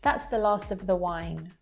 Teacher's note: You just hear a v sound, so you don't really hear that word of. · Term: weak form